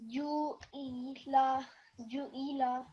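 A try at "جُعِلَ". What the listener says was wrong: Ju'ila, make it short.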